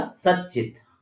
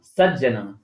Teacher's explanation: उच्चारण स्थान इत्यादि प्रयत्न आदि मिलाने पर हमें त के स्थान पर च ही करना होगा, तो बन जाएगा सच्चित।